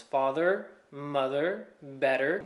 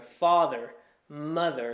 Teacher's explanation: With the American accent, you hear those R's.